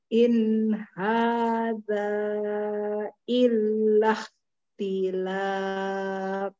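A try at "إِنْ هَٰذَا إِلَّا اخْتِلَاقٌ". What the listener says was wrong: Jangan di ko, kalau ko dia berharokat. Sukun. Lako. Lako.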